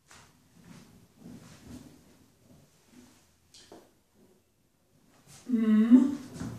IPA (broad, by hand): m